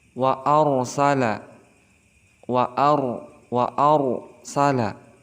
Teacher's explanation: huruf sebelumnya berharakat fathah contoh seperti lafaz wa arsala wa waarsala jadi hukum ro di sini dihukumi sebagai RO tafkim maka dibaca harus tebal wa tidak boleh dibaca waar tetapi harus tebal waarala seperti itu